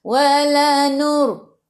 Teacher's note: Sebelum ra ada baris depan, kena baca tebal. Wa lidah naik ke atas.